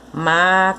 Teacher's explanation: a sílaba tônica dessa palavra é o má, porque é a sílaba que tem o acento.